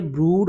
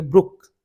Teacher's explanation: ब्रूड long ऊ sound है, ये है लॉन्ग ऊ साउंड, ये है लॉन्ग ऊ साउंड, ये आपको स्क्रीन के राइट पे नज़र आ रही है लॉन्ग ऊ साउंड। अब देखें डबल ओ से लॉन्ग ऊ साउंड भी बन रही है और शॉर्ट ऊ साउंड भी बन रही है